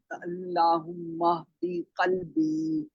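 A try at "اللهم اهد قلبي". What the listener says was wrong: شاباش۔ قوف کو تھوڑا سا موٹا کریں گے کیونکہ یہ کاف نہیں ہے، قوف ہے، ٹھیک ہے؟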